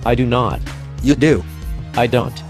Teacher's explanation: he speaks in a monotone manner